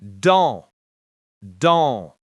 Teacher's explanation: The sound is like the English a with the air out the nose. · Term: nasal sounds